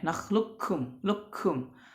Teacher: kafnya yang pertama kafnya sukun, yang kedua berharakat. Jadi dimasukkan langsung ke kaf yang keduanya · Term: idgham kamil